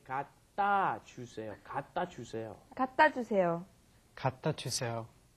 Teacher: there's no vowel in front of the consonant, it comes up against another consonant, it gets kind of swallowed. The sound doesn't come out.